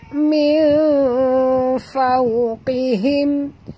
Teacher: Nun mati bertemu fa. Ya. Kena sorok dan dengung. Ikhfa hakiki.